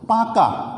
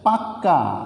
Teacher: তাহলে এটি হচ্ছে দ্বিত্ব ব্যঞ্জন, অর্থাৎ একটি ব্যঞ্জন দুইবার উচ্চারিত হচ্ছে শব্দের মধ্যে, এটি হচ্ছে দ্বিত্ব ব্যঞ্জন।